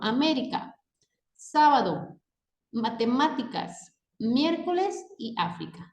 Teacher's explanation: en las palabras esdrújulas, su sílaba tónica recae en la antepenúltima sílaba